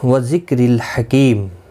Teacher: وذکر الحکیم، کاف ساکن کو ہلانا نہیں، را زیر کی وجہ سے باریک پڑھا جائے گا